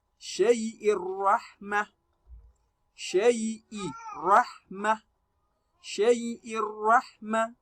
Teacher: No gunna is applied. You drop one of the kasra, which is your tanween, and read with only one. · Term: idgham bighairi gunna